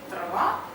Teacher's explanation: а аканье всё понятно редукция произносится либо а либо более краткий гласный